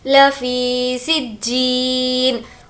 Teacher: जीम पर तजदीद है, सीन को जीम से मिला लेंगे और यहाँ पर या मद्दा होने की वजह से खींचेंगे।